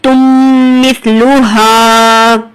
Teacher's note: نون ساکن تنوین کے بعد جیسے ہی یہ حرف یرملون آ جائے تو آپ کو یہاں پر ادغام مع غنہ ہوگا